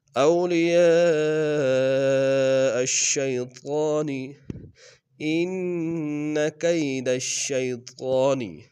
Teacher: کید الشیطان میں دال کو شین کے سامنے آئیں گے، اور طا کے اوپر کھڑا زبر ہے، طا کو موٹا ادا کریں گے